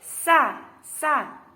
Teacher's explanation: Sin, sa mendesis, meringis, dan bersih.